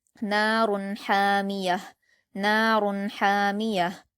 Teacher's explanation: حامیہ میں شروع میں ہا بڑی ہے تو اس لیے حلق سے ادا کریں گے اور لاسٹ میں ہا ساکن کی آواز کو ہم حلق سے ادا نہیں کرتے